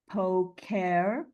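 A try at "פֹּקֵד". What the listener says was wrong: It's a D, a D.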